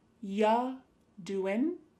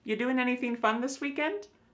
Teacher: The word you is reduced to ya.